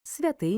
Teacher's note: перший свя ненаголошений відкритий бо закінчується голосним другий ти наголошений закритий закінчується приголосним Миколай у слові три склади перший і другий ненаголошені відкриті третій